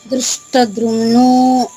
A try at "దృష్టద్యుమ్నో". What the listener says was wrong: ద్యుమ్ను, ధ్రు కాదు, ద్యుమ్ను అమ్మ, ద్యుమ్ను. అమ్మ ధ్రువ్ కాదు తల్లి, దృష్టద్యుమ్ను, దృష్టద్యుమ్ను, దృష్టద్యుమ్ను.